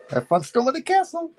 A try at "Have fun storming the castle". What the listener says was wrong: Instead of castle, castle. Don't hold that A. Castle. It's have fun storming the castle.